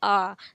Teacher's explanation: विवृत स्वर मुख पूरा खुला हुआ होता है